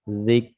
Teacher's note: Sifat yang lainnya adalah syiddah. Jadi ditahan dulu zik. Begitu dilepas muncul hams.